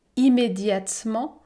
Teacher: je ne prononce pas la voyelle E, immédiatement,